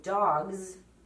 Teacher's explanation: the S in dogs sounds like a Z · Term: plural S